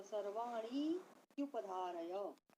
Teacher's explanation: सर्वाणि इति उपधारय। सर्वाणि का ह्रस्व इकार और इति का ह्रस्व इकार दोनों मिलकर दीर्घ हो गए हैं